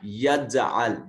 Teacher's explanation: جیم ساکن ہے قلقلہ واجب ہوگا